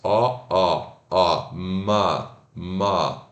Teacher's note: Ele é o O, mas com os lábios relaxados.